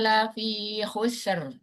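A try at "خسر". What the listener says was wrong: Khusr. Bukan husr. Khusr. Jangan terlalu panjang S-nya.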